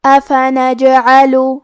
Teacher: یہاں حرف الجیم پہ جزم ہے تو ہمیں جیم کو قلقلہ سے پڑھنا ہے اور قلقلہ کا معنی ہے حرف ساکن کو ہلانا، تو ہم جیم کو ہلاتے ہوئے یہ کلمہ کو پڑھیں گے